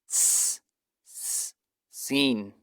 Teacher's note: the tongue remains between the upper and lower incisors, allowing the air to pass through above and below the tongue.